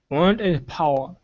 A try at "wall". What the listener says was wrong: pronounce the L Sound there